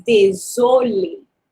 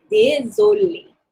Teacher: this is an S, but it sounds like a Z when it is between two vowels